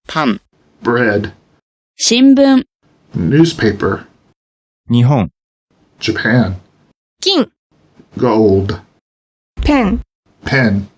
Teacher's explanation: you may think of this as an N with the tongue not quite touching the top of the mouth anywhere. This sound is heard most distinctly at the end of a word. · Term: nasalization